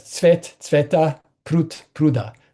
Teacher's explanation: coda devoicing, D to T at the end of the word